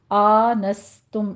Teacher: سین کے آواز سیٹی کے ادا کیجیے